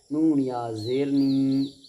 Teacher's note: या मद्दा को एक अलिफ के बराबर खींच करके अदा करेंगे